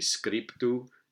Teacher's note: we have labial followed by a coronal